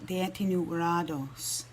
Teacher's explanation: So if we remember that the T's are pronounced as D sounds, Deetinu rados. And the end of that word has kind of a nasally sound. So there's no N, but you can almost kind of hear it when I say Deetinu rados.